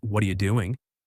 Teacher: the words blend and the T in what get softened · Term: linking